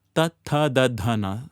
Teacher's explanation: Little outwards. From the tongue against the teeth, upper row of teeth. Slowly outwards.